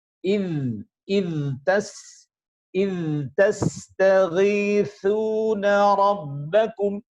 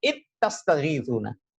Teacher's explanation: Huruf dzal ketika bertemu dengan huruf ta harus izhar. · Dalam riwayat kita, riwayat Hafs, id tastaghithuna rabbakum. Kalau tidak sempurna dalam memberikan hak huruf dzal dari sifat rikhwahnya, maka akan terdengar seakan-akan yang keluar adalah huruf idgham, ittastaghithuna.